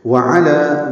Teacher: واو ہونٹوں کی نا تمام گلائی سے